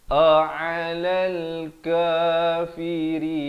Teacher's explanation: hamzah di pangkal, ain di pertengahan. A'alal kafirin, barulah berhenti di situ.